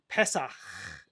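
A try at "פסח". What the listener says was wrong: Ch. Yeah, you need the ch.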